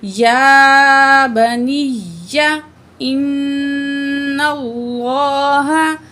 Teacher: نون تشدید ہے، غنہ کر کے پڑھیں گے